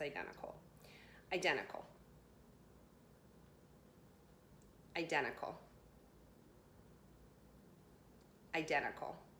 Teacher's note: in talking with friends and just when you're talking kind of fast, you don't even have the time or think to pronounce the T